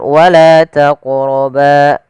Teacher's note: pada lafal la ada mad tabi'i yaitu fathah bertemu dengan alif